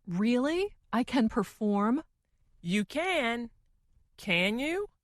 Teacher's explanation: the more wanted to emphasize or make her meaning clear, the slower she said the word can